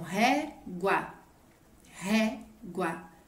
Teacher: A minha mais forte é ré, então ela é uma paroxítona,